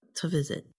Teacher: instead of saying to visit, the vowel in the word to gets changed to a schwa, which sounds like a.